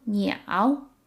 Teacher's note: So it's a third tone word, so it kind of has that pause in the middle.